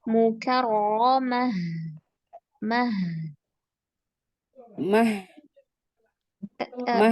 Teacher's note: haknya mau lebih ke makhrajnya, ke pangkal tenggorokan.